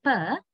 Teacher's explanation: we block the airstream fully using upper and lower lips. And then we suddenly release the airstream. So that is how we produce per.